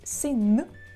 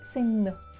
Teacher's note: In comparison to the sound n, when you pronounce, for example, sin, you touch with the tip of your tongue your upper teeth